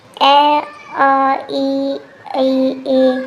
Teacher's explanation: अवृत्तमुखी जिनमें गोलाकार आकृति नहीं बनती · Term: अवृतमुखी